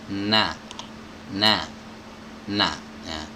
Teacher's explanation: tempat keluarnya ada di ujung lidah bertemu dengan gusi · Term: huruf nun